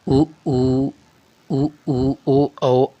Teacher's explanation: जिन स्वरों के उच्चारण में ओंठ गोलाकार होते हैं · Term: विवृत्तमुखी